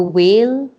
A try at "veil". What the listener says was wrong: and you have to work on the V. You said whale. You said whale.